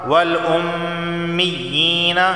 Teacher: میم پر تشدید ہے تو یہاں غنہ ہوگا